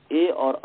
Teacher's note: ए और ई जो है ये कंठ तालव्य वर्ण है अर्थात कंठ और ताल स्थानीय वर्ण है अर्थात दोनों स्थानों सेम अप स्थान ब्याम वक्तव्य दोनों स्थानों से